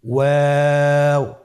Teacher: 2 ঠোঁট গোল করে মাঝখানে ফাঁক রেখে হরফটি উচ্চারণ করতে হবে।